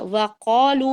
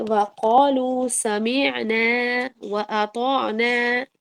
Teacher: وقالوا میں قاف کو موٹا کریں گے